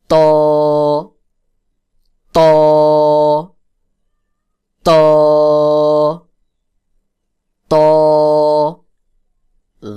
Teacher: ত যেখান থেকে উচ্চারণ হয়, অর্থাৎ জিহ্বার আগা সামনের উপরের যে বড় দুই দাঁত রয়েছে, বড় দুই দাঁতের গোড়ার সঙ্গে লাগাইয়া, জিহ্বার আগা সামনের উপরের বড় দুই দাঁতের গোড়ার সঙ্গে লাগাইয়া চাপ দিয়ে উচ্চারণ করতে হবে।